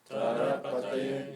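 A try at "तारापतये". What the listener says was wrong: It should be long A. Tara Pataye. Because Tara is his wife. He's the pati of Tara. So he's the husband of Tara.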